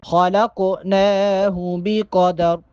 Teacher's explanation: قوف چونکہ ساکن ہے قوف پہ کلکلا کریں گے اور قوف کے بعد جو نون ہے اس پہ کھڑا زبر ہے, نون کو ایک الف کے برابر لمبا کر کے پڑھیں گے.